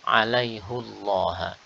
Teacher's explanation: Di sini hak yang dhammah, alaihu. Maka lafzul jalalah di sini dibaca dengan tafkhim, dengan tebal.